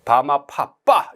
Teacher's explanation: 양순음. 양순음이라고 하는 말은 입술, 양입술에서 소리를 만들어낸다.